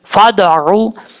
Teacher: फा के बाद जो अलिफ है इसको पढ़ने की जरूरत नहीं है।